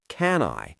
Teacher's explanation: And for can I help you with anything, the can I often sounds like can I. The N connects directly to the I.